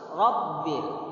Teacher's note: Tidak tersenyum, mengangkat, dan sifatnya adalah tebal. Tafkhim.